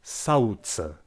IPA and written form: saɯ̯ce (sauce)